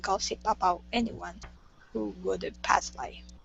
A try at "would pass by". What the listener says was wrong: Let's take a look here at would pass. So here you are finishing the D, saying woulda pass by. So we want to say would pass by.